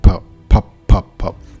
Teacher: especially like in English, the P sound has this breath to it. So when you like talk directly to the and you say P, like power, you can kind of hear it maybe. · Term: plosives